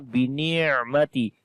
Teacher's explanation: this ain we read in soft sound because this letter has a tawassut quality.